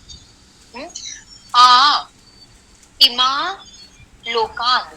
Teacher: It's pronunciation is somewhere between अनुनासिक आकार एंड अनुस्वार सहित आकार। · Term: रंग वर्ण